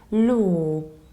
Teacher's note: So there is no L there. It's just a long O